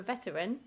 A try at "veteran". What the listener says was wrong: I think you added an extra syllable into the word veteran then, didn't you?